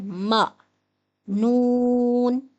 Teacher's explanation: حروف شفوی ہے اور دونوں ہونٹوں کو ملا کر ادا ہوگا، آواز ہے م۔